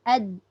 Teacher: Huruf qalqalah ni ada sifat berlawanan iaitu syiddah. Dia tak ada melepaskan apa-apa pun. Dia tak terkeluar, tak boleh. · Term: sifat syiddah